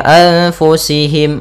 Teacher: anfusihim ada nun mati bertemu fa hukum tajwidnya ikhfa caranya adalah kita samarkan nun